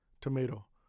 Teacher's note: The first T is strong. The middle t is soft